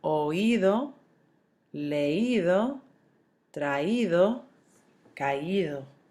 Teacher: you're accenting the I so that you don't have a diphthong form and make it one syllable.